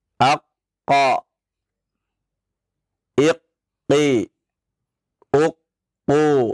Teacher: dalam keadaan tasydid dan tidak waqaf, maka tidak ada qalqalah di sana ya. Aqqa, iqqi, uqqu, tidak ada qalqalahnya.